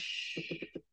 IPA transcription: ʃ